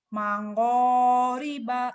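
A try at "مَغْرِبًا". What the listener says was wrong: Mango orang Jawa nih. jangan mango, mago, gofur, mago, magrib, jangan mango nih, mago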